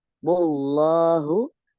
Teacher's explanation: lamnya lam lafaz jalalah tafkhim 2 harokat